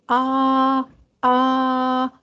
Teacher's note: جو الف کو آپ کھینچ رہے ہیں، جو آ یہ جو آپ کی آواز نکل رہی ہے، یہ آپ کی آواز جوف دہن سے نکل رہی ہے